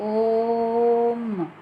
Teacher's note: म छोटा हो गया, यानी जल्दी से छोड़ दिया हमने म वर्ण को और ओ को 3 बार, इसलिए यह प्लुत स्वर।